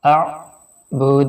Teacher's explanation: جب عین کے اوپر اور حمزہ کے اوپر جزم ہو تو وہاں پہ تھوڑا سا جھٹکا دے کے پڑھا جاتا ہے۔